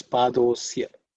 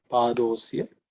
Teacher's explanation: Padaha asya becomes padosya, because the visarga becomes o and a becomes silent. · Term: sandhi